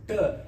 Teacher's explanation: We say ta, it's touching the cerebral. Tongue is rolled ta.